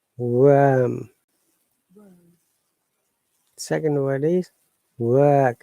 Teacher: Second word is work. R is silent.